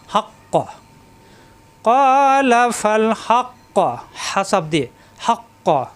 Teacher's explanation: জিব্বার গোড়া থেকে উচ্চারণ, মাকড়া ঠিক রেখে উচ্চারণ করতে হবে।